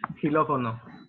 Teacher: In this case, xilófono is pronounced as an H in English